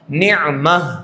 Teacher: ہائے تانیث بھی اگر ہے تو وقف بالابدال ہوگا، جیسا کہ آپ نے قاعدہ پڑھا، گولتا ہو تو کیا کرتے ہیں، ہائے ساکینہ سے بدل دیتے ہیں، اس کو کہتے ہیں وقف بالابدال